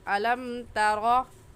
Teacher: मीम साकिन के बाद ना बा है और ना ही मीम है, इस वजह से इस मीम साकिन पर गुन्ना नहीं करेंगे और ऐसे पढ़ेंगे अलम तरा।